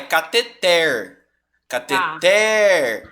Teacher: A sílaba tônica é a última, por isso ela é uma oxítona